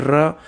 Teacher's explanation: जब हवा मुख से बाहर निकलती किसी वर्ण के उच्चारण में तो वो जीभ को कप कपाती हुई बाहर निकलती है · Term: लुंठित